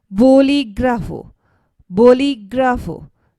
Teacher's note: the stress is placed on the I, which has accent mark here